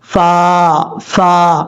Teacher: فا کا مخرج ہے اوپر والے جو دو دانت ہیں ان کا کنارہ نیچے والے ہونٹ کی تری والی جگہ پہ لگے گا تو فا پڑھا جائے گا.